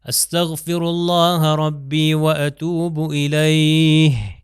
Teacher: اگر میں کہوں الیہ تو بس اس کا مطلب میں نے ہے کو تلفظ نہیں کیا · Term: ہی کی آواز